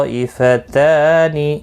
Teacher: طائفتان، تو یہاں مد متصل ہے، 4 الف کی مقدار کے برابر کھینچ کر پڑھیں گے۔ تا کے اوپر کھڑی زبر ہے، ایک الف کی مقدار کے برابر کھینچ کر پڑھیں گے۔